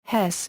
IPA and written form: ˈhɛs (Hesse)